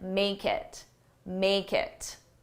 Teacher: But did you also know I said make it, make it? Now, if you looked at each individual sound, it sounds like may, kit. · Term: connected speech